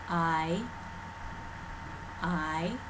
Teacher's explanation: the front mid part of the tongue does raise towards the roof of the mouth · the second half of this diphthong, you have to raise the front mid part of the tongue